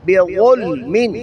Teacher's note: زبان کی نوک اوپر والے دانتوں کی نوک سے اور زبان کی جڑ اور زبان کے سنٹر کو اوپر اٹھائیں گے جس سے آواز بھاری اور موٹی ہو جائے گی